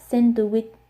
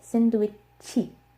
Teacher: because the last sound in English is the ch sound, they say chi.